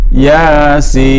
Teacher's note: Masuk kategori yang dibaca 6 harkat. Jadi bacanya ya-nya 2, sin-nya 6.